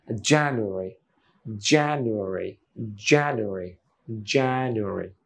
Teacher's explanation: জানুয়ারি না, ওই নূর পরে একটা ছোট্ট একটা আয়ের মতো আনতে হয়